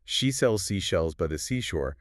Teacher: For the she sound, your lips are rounded and the air is a wider, softer whoosh.